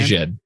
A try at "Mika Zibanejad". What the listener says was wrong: He's Italianizing it up a little bit.